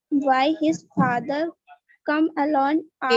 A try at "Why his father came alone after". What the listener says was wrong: Came alone, came है, देखो CAME है, came, कम नहीं है.